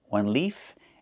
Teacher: One leaf with the F sound with no voice.